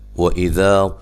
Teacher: واو کو ادا کرتے ہوئے ہونٹوں کو گول کرنا ہے، اذا ذال نرم ادا کرنا ہے، اور یہ الف مدہ ہے۔